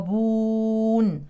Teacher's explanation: القاف من حروف التفخيم واتى ساكنا يعني كمان في قلقله